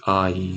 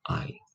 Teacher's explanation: they're not to be pronounced as a diphthong and to be pronounced as separate vowels